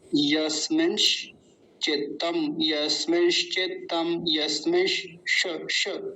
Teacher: अंतर है दोनों में बड़ा गहराई से समझने वाली बात है पहला दंती सकार है दूसरा तालव्य सकार है दोनों आधे हैं तो दोनों के बीच भी पता चलना चाहिए